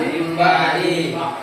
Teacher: Karena kurang tidak didengungkan. Selain dirubah menjadi mim, harus juga ada didengungkan.